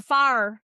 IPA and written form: faːɹ (FIRE)